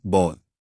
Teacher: बी एक कसोनेंट है। इसका साउंड निकलते वक्त हमारे होठ लिप्स आपस में टच होते हैं। यानी हवा रुकती है। इसलिए हम इसके आगे लगाते हैं अ बॉल।